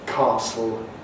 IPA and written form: ˈkɑːsl (castle)